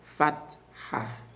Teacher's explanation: After the T, I want you to add a separate H sound.